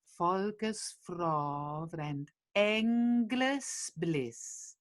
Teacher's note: Volkes frov, so it's an open O